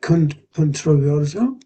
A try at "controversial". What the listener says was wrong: So controversial, controversial. It's got the AL on the end of it there, so controversial, controversial.